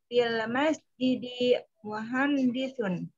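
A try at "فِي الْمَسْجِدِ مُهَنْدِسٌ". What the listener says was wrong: Kecuali di jidinya yang masih terasa lebih panjang dari semestinya.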